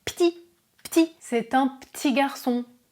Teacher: Très souvent, le E disparaît et je dis petit.